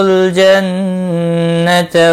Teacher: نون مشدد پر گنہ ہوگا